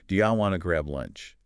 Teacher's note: And everything else gets compressed. Do you often becomes ya, want to becomes wanna. So the whole thing flows like one connected phrase.